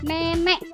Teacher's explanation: posisi lidahnya itu madia bawah dengan bagian lidahnya bergerak depan. Posisi mulutnya itu semi terbuka.